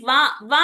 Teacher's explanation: వ అనంగానే మన నాలిక అనేది ఎక్కడ తగులుతుంది ఒక దంతానికి తగులుతుంది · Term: దంతవ్యః